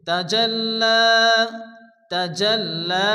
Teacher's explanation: লামের উপরে খালা জবর এক আলিফ টেনে পড়তে হবে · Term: খারাজ জবর